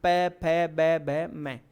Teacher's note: आपके दोनों होंठ आपस में टकराए तो प वर्ग ओष्ठ्य वर्ण